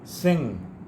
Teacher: Sin and sing, the ultimate sound is na. Sing. Don't use g sound in this.